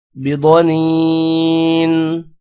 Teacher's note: ضاد موٹا ہوگا، نون کے بعد یہ ہے، لمبا کریں گے.